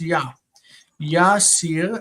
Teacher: The intervocalic hey drops out. It's ya. Yasir, and we have an open compensatory lengthened syllable.